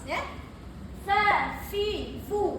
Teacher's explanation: sifat yang kita nampak bila sebut fa ni, satu hamas, angin keluar, dua istifal, merendah, yang menampak kita baca Quran bila fa ni mesti ada hamas fa, fi, fu sebut fi, fu, af, if, uf, f, if, uf.